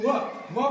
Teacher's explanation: व बोलल्यानंतर दात आणि ओष्ठ दंतोष्ठ बोलतात